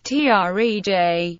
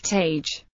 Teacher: For example, some people pronounce trej as tej. The R is dropped and the vowel begins by dipping much lower in tone than standard speech and then rises, effectively doubling its length. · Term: low rising or dipping tone